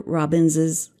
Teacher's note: you just add the punctuation mark, the apostrophe, and when you say it, you add the reduced vowel sound